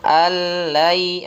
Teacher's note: Allai, yang kedua baru idgham bi gunnah. Maka nun mati ketemu lam, itu idgham bila gunnah, nunnya hilang langsung dimasukkan ke lam, langsung bacaan lam. Lan ketemu ya, lannya nunnya hilang, masukkan ke ya.